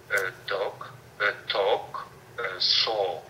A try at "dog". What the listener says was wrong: I want longer with dog. Go ahead, dog.